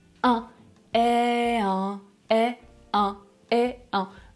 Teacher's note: Je dois faire passer l'air par le nez pour prononcer la voyelle nasale.